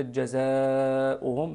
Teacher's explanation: يبقى ما يتعلق بالمد، كلمة جزاؤهم، هذا اسمه المد المتصل، المد الواجب المتصل مدوب بمقدار 6 حركات، ما نقولوش جزاؤهم بحركتين، غير صحيح، تمد 6 حركات